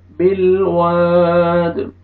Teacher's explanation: الف مدہ واو کو آپ نے کھینچنا ہے اور دال ساکن کریں گے تو قلقلہ ڈبل ساؤنڈ آئے گا